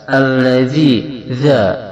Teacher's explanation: za ini sifatnya adalah zahr, dalam arti tidak ada hembusan napas ketika diucapkan. Yang kedua, za ini mempunyai sifat rokhawa, dalam arti tidak ditekan namun dilonggarkan cara membacanya.